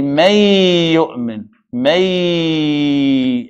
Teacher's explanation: And then we're going to say, may yu'min, may, and we have ghunna, we stretch it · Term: idgham bi ghunna